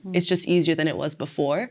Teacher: she stressed the final syllable of easier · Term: sentence stress